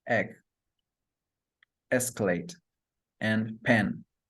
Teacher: The next vowel sound is E, which area is front, tongue position high, lip shape is spread, and muscle tension is lax.